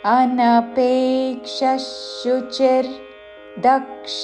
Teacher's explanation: విసర్గ ఉచ్చారణ తాళవ్య ష పక్కన షాతో పదము మొదలవుతున్నది కాబట్టి ష ఉచ్చారణ